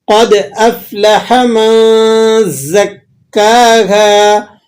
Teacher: قد یہاں پر قلقلہ ہوگا، اسے قلقلہ صغیرہ کہا جاتا ہے